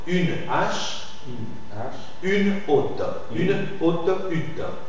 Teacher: Le E de une, je l'articule parce que le mot qui suit, H, présente un H aspiré. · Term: e muet